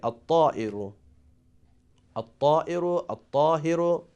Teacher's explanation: we don't pronounce letter Lam, so Ta is one of the letter of Shamsi.